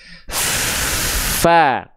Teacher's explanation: kita mengalirkan nafas tuh tapi di saat yang sama suaranya pun ikut terdengar mengalir Fa nah gitu satu paket antara sifat sifat hams dengan rohhwa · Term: huruf Fa